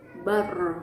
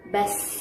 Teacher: pengucapan huruf ro tidak terlalu ditahan sehingga terdengar agak lemah, sehingga terdengar agak mengalir tapi tidak terlalu mengalir. Jadi di tengah-tengah, sedang. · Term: tawasud